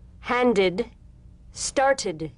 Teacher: The medial T becomes a soft D.